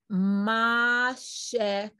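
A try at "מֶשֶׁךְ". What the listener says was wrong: Why do you read the second vowel different from the first?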